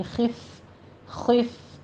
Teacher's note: خو پر پڑھیں گے اور فا پہ حمز کرنا ہے